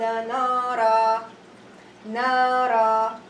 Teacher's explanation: I will drop the fatha tanween, I will read it as nara.